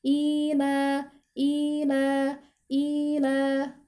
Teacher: tanda mat yang menunjukkan bahwa huruf sebelumnya atau huruf hamzah ini itu dibaca panjang selama 2 harokat. Jadi lamanya ketika membaca huruf hamzah dan ketika membaca huruf lam ila itu sama.